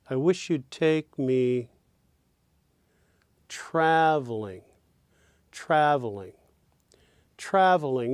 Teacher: in traveling the first syllable of course is stressed